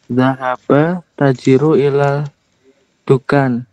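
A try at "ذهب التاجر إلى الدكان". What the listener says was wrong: Panjang bacanya bisa diperjelas lagi. Zahabat tajiru ila dukani. Di sini ada at-tajiru. At-tajiru. Ada alif lamnya ya di sini. Ada alif lamnya. Ketika apa namanya? Sebelum alif lam itu ada kata lain, misalnya di sini zahaba. Nah. Kan ketemu alif lam tuh. Secara asal bacanya zahaba at-tajiru.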